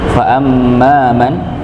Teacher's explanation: ada mim yang bertasydid pada kata fa amma, maka sekali lagi kita ingatkan untuk mendengungkan. Ya, untuk mendengungkan setiap dua huruf ya. · Pada ayat yang ke-7 ini kita dapati ada mim yang bertasydid. Maka mim yang bertasydid maka didengungkan, ditahan.